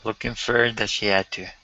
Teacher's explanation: Okay, so we can drop the H on had.